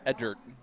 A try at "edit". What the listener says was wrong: you put an r in there for no reason